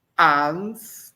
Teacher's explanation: Esse U com a braquia, essa semilua, é o fraquinho, é o de náutico, não é o U de caju